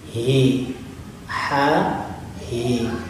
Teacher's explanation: Nah, kalau ha mendesah, kalau hi itu bergetar nadanya.